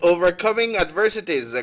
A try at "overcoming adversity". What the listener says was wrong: You add on one S there. The S not there. The first one. You say adversities.